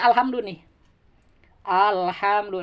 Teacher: Demikian juga pada al-komariah itu dibaca jelas, terdengar L-nya. Kalau samsiah justru tersamarkan L-nya itu.